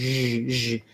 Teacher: If you think about it as a sh, SH sound, but then your voice is on, so saying sh, have the mouth position that you would have for she or sugar, and then just turn your voice on. Zh, zh. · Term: zh sound